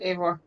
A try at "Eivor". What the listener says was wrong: Yeah, the E in my name is actually pronounced as an A, not an E. So it's like Eivor. Eivor. Like, drop the I, pronounce the E as an A. the I's silent.